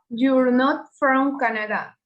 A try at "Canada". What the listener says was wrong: Y si puedes, Canada lo puedes pronunciar en inglés. Canada. No Canadá, Canada. Esto, aunque suene, o sea, que se ve una A, se pronuncia casi como una E. Canada.